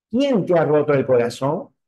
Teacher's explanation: el tono descendente lo que hace es que encontramos el tonema hacia abajo